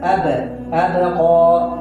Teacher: ٹھیک ہے اب یہاں پر با پر قلقلہ ہو رہا ہے اب با کے مخرج میں جنبش ہو رہی ہے ایک حرکت ہو رہی ہے ٹھیک ہے آواز ٹکرا کر دوبارہ واپس آ رہی ہے